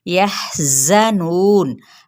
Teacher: हम, यहाँ पे हा अक्सर हलक से अदा करेंगे और मीम पे इज़हार शफ़वी। यहज़नून, हा पे हम्स, जा सख्ती से